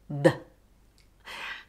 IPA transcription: ð